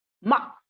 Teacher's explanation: tone four is abrupt falling from five to one